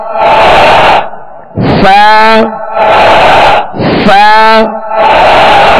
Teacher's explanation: سا میں زبان کا سرا اوپر کے دانتوں کے اندرونی کنارے